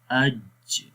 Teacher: تالو کے درمیان والے حصے کے اوپر ٹچ کرے گا تو وہاں پر جیم کی آواز پیدا ہوتی ہے۔